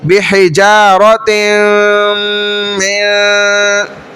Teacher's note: تو تا تنوین آ گئی، اس کے بعد یرملون میں سے میم آ گیا تو تا کو میم میں داخل کریں. بحجارت من، یوں ہوگا. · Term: ادغام